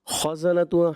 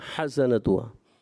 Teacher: ख़ा आपका ऐसा महसूस हो रहा है हा जैसा